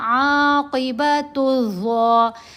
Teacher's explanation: حروف شمسی سے پہلے جب الف اور لام جیسے یہاں آئے، الف اور لام اکٹھے آئے تو ان دونوں کو سائلنٹ پڑھا جائے گا، خاموش رہیں گے، یہ اپنی آواز نہیں دیں گے۔ جیسے یہاں ہم نے پڑھا عاقبۃ الظا، عاقبۃ ال نہیں پڑھا، یا الظالمین نہیں پڑھا گیا۔